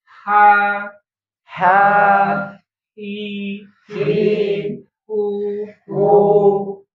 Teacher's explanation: Tenggorokan bagian tengah ya. di atasnya jakun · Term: huruf H